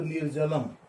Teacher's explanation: नी plus जलम, ज तीसरा वर्ण है, च छ ज, तो नी प्लस जलम तो निर्जलम ना, विसर्ग का र बना, आगे कोई स्वर नहीं है इसलिए उस र में जाकर नहीं मिला, आगे व्यंजन है ज, इसलिए र बन करके वो रेप हो गया, निर्जलम हो गया। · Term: रत्व संधि